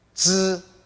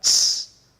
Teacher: Z, no air. Ts, lots of air.